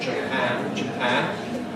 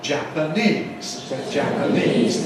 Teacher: the vowels change as the stress changes. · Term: vowel reduction